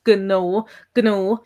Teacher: you can hear like a little U between the G and the N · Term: auxiliary vowel